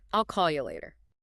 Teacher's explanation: So the function words I'll and you, they get squashed. · You almost always reduces to ya or ya in the middle of a sentence. · The action, call, and the time, later. Those are our two stress points, our two rhythmic beats.